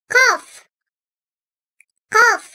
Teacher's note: Dil köpüğünün onun karşısında bulunan üst damağa değmesiyle çıkartılan bu harf kalın seslidir.